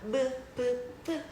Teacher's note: 두 입술 사이에서 그러니까 요기 요기 사이에 맞닿는 소리를 입술 소리라고 한다. 브 브 브 같은 경우 부딪혀서 소리 나죠.